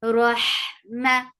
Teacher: And ha is from middle part of your throat.